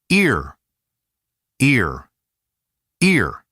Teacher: Do not open the mouth too much. Start narrow and light, then let it curl into /r/. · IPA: /ɪr/